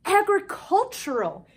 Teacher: Sometimes the T says ch when followed by a U.